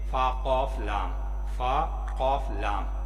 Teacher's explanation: اور لام جو ہے یہ اصل شکل ہے، بغیر نقطے والا حروف ہے، اوپر نیچے کوئی نقطہ نہیں ہوتا. تینوں کو ملا کے پڑھیں تو قلقلے کے ساتھ قاف کو پڑھیں گے